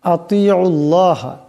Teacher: এখানে আল্লাহ লামের ডাইনে আইনের উপর পেশ আসছে তাই এই আল্লামকে মোটা আওয়াজে পড়তে হবে